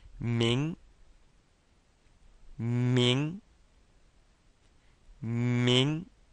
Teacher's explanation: let's try that second tone rising